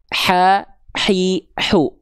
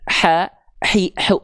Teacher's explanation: Kalau H kecil teman-teman lafalkan tepat dari bagian tengah tenggorokan, maka dia akan mengalirkan nafas yang karakternya berbisik yaitu H kecil.